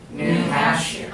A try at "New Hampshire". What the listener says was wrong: Again, I'm still hearing Hamp here. Again, drop your jaws. New Hampshire.